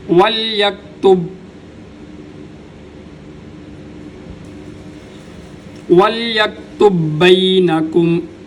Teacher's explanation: یہاں پر با کے اوپر قلقلہ نہیں ہوگا، اس وجہ سے کہ با کے بعد آگے با مشدد ہے، تو با بشدت یہ اپنے ماقبل حرکت چاہتی ہے، تو بعض